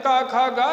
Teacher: देखिए, आप जब का उच्चारण करते हैं, का खा गा, तो इनका उच्चारण स्थान कंठ है, वायु कंठ से होकर के निकलती है, कंठ का स्पर्श करती है